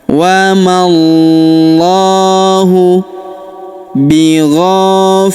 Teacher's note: Alif ini juga tidak dibaca ya. Wallahu pada huruf lamnya kita panjangkan dua harakat karena terdapat alif kecil di atasnya dan kita tahan dan tekan ya karena terdapat tanda tasdid